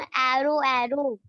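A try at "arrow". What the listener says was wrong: ए नहीं सुनाई दे रहा आपको? एरो में ए का साउंड नहीं आ रहा है, ये वाला साउंड नहीं आ रहा है। कैट, ए आ रहा है ना। हम आपसे बोले छोटा अ का साउंड है, सिर्फ अ, जैसे ये था ना अगो, अगेन, ऐसा साउंड है।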